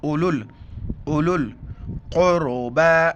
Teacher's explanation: ये वाव लिखा जाता है, पढ़ा नहीं जाता है। इसके ऊपर न जज़्म है न ज़बर ज़ेर पेश, कुछ भी नहीं है।